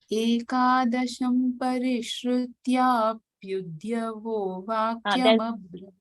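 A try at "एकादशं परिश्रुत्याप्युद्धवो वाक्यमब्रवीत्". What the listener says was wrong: What is happening is udhyavo, you're saying. Dhya is not there. Uddhava is uddhava. So, parishrutya pyudhavo. But yours is happening pyudhyavo.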